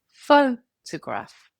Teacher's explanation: A stressed syllable is louder, longer, and slightly higher in pitch than the others. Take the word photograph. The stress is on the first syllable, pho-to-graph. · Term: word stress